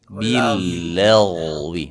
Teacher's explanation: ditebalkan huruf gin sukun sebelumnya fathah ditebalkan